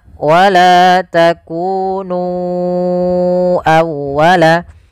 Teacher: Maka kita harus memanjangkan nu-nya sepanjang 4 atau 5 harakat. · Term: mad jaiz munfasil